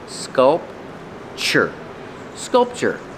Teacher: Pronunciation, sculpture. The T-U is pronounced with the ch-ch, like chicken.